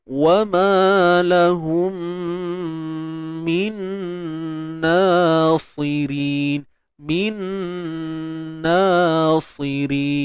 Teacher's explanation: ingat jangan bawa pengaruh sad tu awal sangat pada nun tu. Yang tebal kat sad je. Nak kekal dengan sifat asal dia.